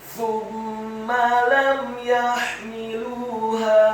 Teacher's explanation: Lam ya, huruf mim yang sukun bertemu dengan huruf ya, hukum bacaannya adalah izhar syafawi. Apabila ada huruf mim yang sukun atau mati bertemu dengan selain mim dan ba, dalam hal ini adalah huruf ya, maka hukum bacaannya adalah dibaca dengan jelas izhar syafawi, tidak boleh digunakan huruf mim yang sukunnya.